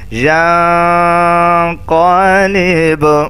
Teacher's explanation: چاہے یہاں وقف کریں یا ملا کر پڑھیں پھر بھی یہاں اخفا کریں گے، ناک میں آواز لے کے جائیں گے